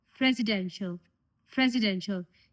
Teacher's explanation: In this word, I am also reading S as Z sound because this letter S is between two vowels.